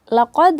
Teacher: Karena ini laqad merupakan qalqalah kubra, yang mana pantulan itu lebih keras karena dia kubra, besar ya